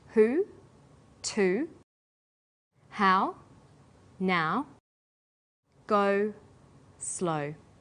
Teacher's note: High back vowels link with the W sound. · High back vowels are oo, ow, and o. Sounds that are produced with the highest part of the tongue but close to the back of the mouth.